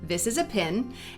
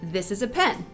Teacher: For many American Southerners and Midwesterners, these two words merge to use the same vowel sound. They're both pins. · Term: pin-pen merger